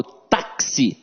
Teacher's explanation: esse X aqui tem som de KS. Ou seja, eu tenho 4 letras e 5 fonemas na palavra táxi.